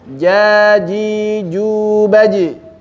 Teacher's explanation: Tengah lidah dibenturkan ke langit-langit keluar huruf jim.